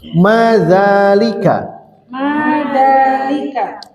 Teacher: Za-nya panjang seperti ha itu ya. Karena tidak bisa dituliskan fathah berdiri, seolah-olah pendek, padahal panjang. Ada alif aslinya.